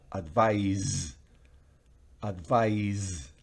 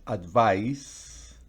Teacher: en la primera al final es z, es Z, pero en la segunda advice es una S